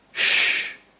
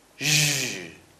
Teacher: same place, same manner of articulation. The only difference is that one is voiced while the other is not.